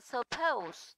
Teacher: từ suppose thì trọng âm rơi vào pose